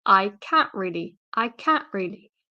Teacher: so again being really lazy here I dropped the T and I say I can't really not I cannot really I it becomes I can't really or